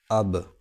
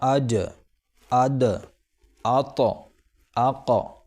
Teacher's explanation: اور قلقلہ کا مطلب یہ ہے کہ زبان قلقلہ کے حرف کے مخرج پر لگ کر اچٹ جائے گی۔ اچٹ جائے گی یعنی اچھل جائے گی، ریپیٹ ہو جائے گی۔